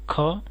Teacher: महाप्राण व्यंजनों के उच्चारण में हकार जैसी ध्वनि विशेष रूप से रहती है और श्वास अधिक मात्रा में निकलती है